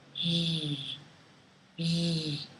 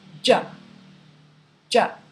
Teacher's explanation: J is a stop consonant. For zh, on the other hand, the air flows continuously over the tongue tip.